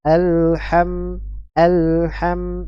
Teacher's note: lam sukun dan mim sukun durasi durasi atau panjang aliran suaranya sama